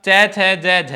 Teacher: चै छ जय झ ये 4 ध्वनियां तालु से बोली जाती हैं